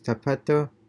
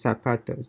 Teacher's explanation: So also the TH is Spain and S is Latin America.